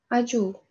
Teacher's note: mana a va u unlilari o'rtasida kelyapti. J tarzida talaffuz qilamiz.